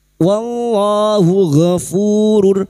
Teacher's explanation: lam jalalah yang didahului fathah dibaca tafkim. Wallahu ghafurur, ghafu fu dima diikuti wawu sukun 2 harakat matabi'i.